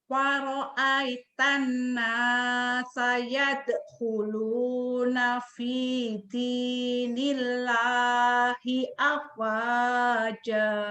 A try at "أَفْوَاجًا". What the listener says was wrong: Afnya tidak panjang, tapi pengucapan afnya sempurna. Ayo, sempurnakan pengucapan F-nya.